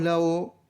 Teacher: la parte que sube en la parte posterior es la que está más cercana a la campanilla por eso la vocal se dice que es posterior sí pero como permite bastante espacio entre el paladar y la